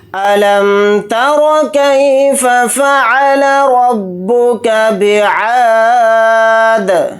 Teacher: عین کے ساتھ الف مدہ ہے، عین الف زبر آ کو تھوڑا کھینچ کر پڑھیں گے ، دال کو ساکن بنا کر پڑھیں گے حالت وقف میں۔